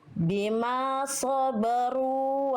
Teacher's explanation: Thu ro dahnya tebalkan ya. Jadi ro dah ro fathah diangkat pangkal lidahnya tebal ya.